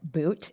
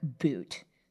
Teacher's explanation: So in a word like boot, your ooh will move forward. So he's going to say something more like boot, and she's going to say something more like boot, super forward in the mouth. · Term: ooh fronting